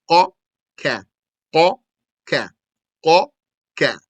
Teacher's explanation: From the back of the tongue come the qaf and the kaf.